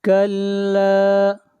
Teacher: لا کھینچ کر پڑھیں گے ایک الف کے برابر، مد اصلی ہے